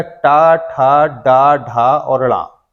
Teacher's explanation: जब भी हम इनका उच्चारण करते तो हमारी जीभ जो है मूर्धा को स्पर्श करती है, इसीलिए इन्हें मूर्धा व्यंजन भी बोलते हैं